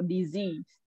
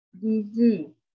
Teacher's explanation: So disease, the stress is on the second syllable.